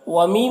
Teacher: ومی میں یا مدہ ہے، اسے ایک الف کے برابر کھینچیں گے۔